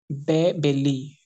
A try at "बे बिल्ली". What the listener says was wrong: नहीं आप इसको बे ना पढ़ें, इतनी मेहनत जाया ना करें, बे बच्चा, बे बिल्ली नहीं।